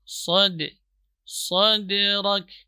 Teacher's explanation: qalqalahnya dibaca kecil karena dia termasuk qalqalah sughra.